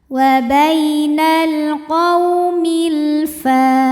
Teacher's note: Karena alif lam menghadapi huruf qamariyah yaitu huruf fa. Maka alif lam ini dibaca dengan jelas atau biasa disebut dengan izhar qamari.